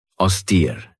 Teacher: This has 2 syllables, and the stress is on that second syllable with that long E sound.